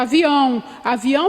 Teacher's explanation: Avião tem um som nasalizado lá no finalzinho